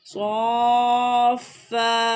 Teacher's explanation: فا کو یعنی کہ سختی کے ساتھ پڑھیں گے تاکہ تشدید کی ادائیگی ہو سکے